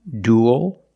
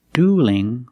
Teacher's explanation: Duel with a dark L and dueling with a light L. Because the L is between vowels in the word dueling.